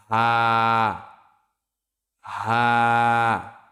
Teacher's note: কণ্ঠনালী শুরু হইতে উচ্চারিত হয় হা।